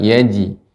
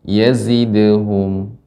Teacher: Jadi zai ini tajam, sifat zai sofir, tajam ya.